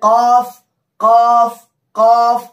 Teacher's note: जड़ जबान तालू के नर्म हिस्से से मिलकर कॉफ अदा होता है।